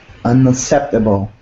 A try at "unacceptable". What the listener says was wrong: You got to put in that K sound. It's missing. There's 2 C's, so one of them sounds like a K, like a kappa.